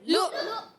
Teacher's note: پہلے والا لام حمزہ سے ملتا ہے تو جھٹکا آتا ہے